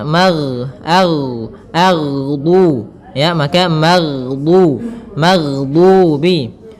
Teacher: huruf ghain tidak boleh mantul, tetapi dia memiliki sifat yaitu mengalir suaranya maghdu, ya, maka maghdubi.